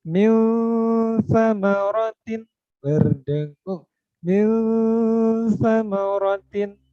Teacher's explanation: Oke, nun sukun bertemu sa, bacanya antara izhar dan idgham atau sederhananya dengung tapi rada dimasukin ke huruf setelah nun sukun atau yang tanwin gitu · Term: ikhfa